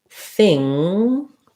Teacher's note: The word thing has an NG with my tongue lifting in the back.